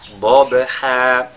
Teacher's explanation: à la fin on fait ce qu'on appelle Maddul Iwad dont la durée de prolongation est de 2 harakat